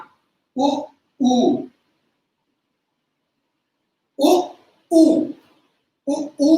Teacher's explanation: अब अगर जो ओष्ठ से स्वर में जाकर देखोगे तो दो ध्वनियां उ उ उ उ उ उ में होठ हमारे यूज होते हैं, मिलते नहीं है, खुले रहते हैं